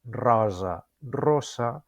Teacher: La O oberta de rosa i la O tancada de rossa. I la S sonora de rosa i la S sorda de rossa.